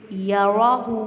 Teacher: را کو پر پڑھیں گے اور یا اور را کی حرکت کو لمبا نہیں کریں گے، لیکن ہا کی حرکت کو لمبا کریں گے کیونکہ یہاں پہ الٹا پیش ہے، اس کو ایک الف کے برابر لمبا کریں گے۔